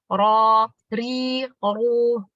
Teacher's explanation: Bergetarnya ujung lidah dengan getaran yang samar. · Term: takrir